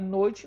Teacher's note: Eu tenho o O, que é uma vogal mais forte, e o I, que é uma semivogal mais fraca. Então, se eu tenho uma relação do mais forte para o mais fraco, eu tenho um ditongo decrescente.